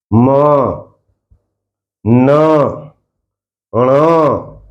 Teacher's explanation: नासिक्य यानी कि नाक का प्रयोग। हवा नाक से निकलेगी, नाक से निकलेगी, या उच्चारण नाक से निकलेगा।